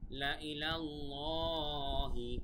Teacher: আল্লাহ শব্দের আগে জবর থাকার কারণে কিন্তু আল্লাহ উচ্চারণটা মোটা